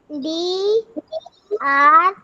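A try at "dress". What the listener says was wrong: ए नहीं आएगा, ए नहीं आएगा यहाँ पे।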